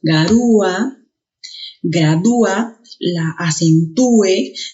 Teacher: te darás cuenta que hay separación de esas dos vocales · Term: hiato